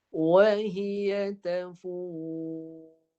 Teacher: Ra-nya dimatikan dan tebal hujung belakang lidah kerana sebelum ra tu ada huruf fa berbaris di hadapan. Fa baris depan, jadi ra-nya mesti ditebalkan. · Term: ra yang tebal